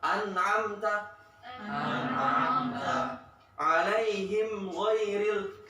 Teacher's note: An'amta tetap keluar dari hidung, tapi nggak terlalu ditekan, nggak terlalu kerasa. An'amta alaihim ghairil mimnya tetap ada suara dari hidung, cuma nggak terlalu kerasa. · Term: naqisah